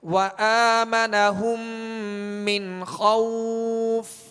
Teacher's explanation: نون ساکن کے بعد خا ہے، خا کون سے حروف میں سے؟ حروف حلقی میں سے، لہذا یہاں پر اظہار کریں گے، غنہ نہیں کریں گے